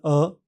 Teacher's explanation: हवा बिना किसी रुकावट से मुंह से बाहर निकलती है। जीभ मध्य स्थिति में रहती है और होठ हल्के गोल होते हैं। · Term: स्वर अ